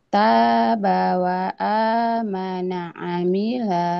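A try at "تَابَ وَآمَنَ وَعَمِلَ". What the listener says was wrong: Wahnya ketinggalan. Wa amila. Ulang lagi.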